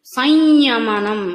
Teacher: సంస్కృత ఉచ్చారణ పరంగా అయితే దాన్ని సంయమనం అని పలకాలి. అంటే యకారాన్ని నాసిక ద్వారానే పలకాలి. అంటే సున్నా యొక్క ఉచ్చారణ కూడా నాసిక ద్వారా యకారం అవుతుంది అనమాట.